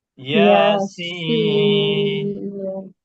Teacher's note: সিন জিহ্বার আগা নিচের দাঁতের গোড়া।